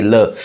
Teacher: जब भी ल का उच्चारण करेंगे तो हवा जो है जिव्या के दोनों साइड से निकलेगी यानी कि पार्श्व भागों से निकलेगी। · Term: पार्श्विक व्यंजन